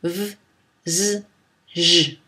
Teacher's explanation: Parlons maintenant des fricatives voisées. Ce sont les consonnes fricatives pour lesquelles on utilise les cordes vocales, on les fait vibrer. Ce sont les sons v, z, j.